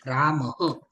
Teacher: अगोदर अचं उच्चारण होतं, नंतर हचं उच्चारण होतं, जे की विसर्गाचं उच्चारण आहे